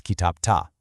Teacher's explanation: If a word ends in a hard voiceless consonant, like p, t, or k, think of the word kitap, the d in the suffix actually hardens into a t to match it. So it's not kitapda, it's kitapta.